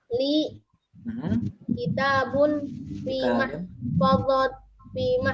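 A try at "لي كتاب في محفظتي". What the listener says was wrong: Iya, mahfadzati panjang ya.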